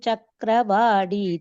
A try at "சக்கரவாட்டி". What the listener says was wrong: சக்கரவாடிங்கிற இல்ல, வாட்டி ஒன்லி அந்த மகாபிராணா வர லிட்டர்ஸ் எல்லாம் மட்டும் கொஞ்சம் இது பண்ணி சொல்லுங்க, அழுத்தி சொல்லுங்க,